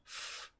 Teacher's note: F is a voiceless labiodental fricative.